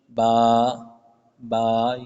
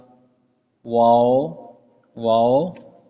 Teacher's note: یہ 4 ایسے حروف ہیں جن کو صرف اور صرف ہونٹوں سے ادا کیا جاتا ہے